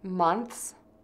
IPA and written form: mənθs (MONTHS)